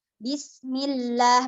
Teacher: karena huruf lam sebelumnya berharakat kasrah maka lamnya dibaca tipis